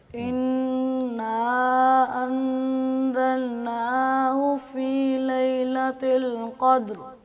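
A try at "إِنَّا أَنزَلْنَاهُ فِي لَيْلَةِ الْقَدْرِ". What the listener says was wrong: آپ نے مد پوری نہیں کی، دوبارہ پڑھیں.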